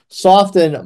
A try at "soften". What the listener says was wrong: It's funny you pronounce the T in soften. I would say soften. Maybe you've been in the Carolinas.